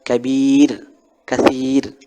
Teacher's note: bisa dibaca tipis apabila dia mati didahului oleh baris kasrah seperti misalnya kir kir khir mati tetapi didahului oleh baris kasrah